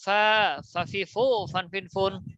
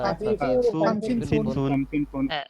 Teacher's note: উপরের দাঁতে নিচের ঠোঁটে বাতাস চালু